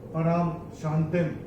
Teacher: और ये जो रा के ऊपर जो अनुस्वार आ रहा है उसका बाद का अक्षर है श, और अनुस्वार के बाद जब श आएगा तो अनुस्वार का उच्चारण होगा म